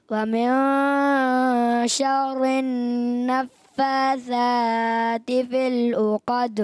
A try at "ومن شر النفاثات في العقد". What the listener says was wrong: پکڑنا بھی را مشدد کو پکڑے نا. ومن شر شر ایسے نکل جاتا ہے ایسے نہیں. ومن شر النفاثات في العقد.